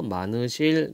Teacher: 요때 히읗이 빠져버려요 그래서 많으실 요렇게 발음이 됩니다